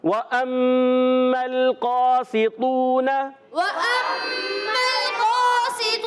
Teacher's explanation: اور میم مشدد، ایک الف کا غنہ کریں گے